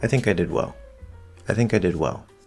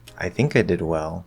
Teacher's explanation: What's happening is we're giving this feeling of uncertainty by doing a short fall and then pulling off or pulling back a little bit, right? Instead of letting it completely fall and feel firm. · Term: fall rise